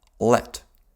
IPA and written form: ɫɛt (let)